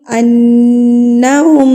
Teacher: ہے من القرونی انہم نون مشدد پر غنہ کیا جاتا ہے غنہ کہتے ہیں ناک میں آواز کو لے کے جانا تو آپ نے نون کی آواز کو ایک حرکت کے برابر ناک میں روک کے رکھنا ہے